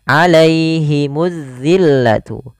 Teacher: Jangan alaihimu, jangan dibaca terdengar huruf e, tapi i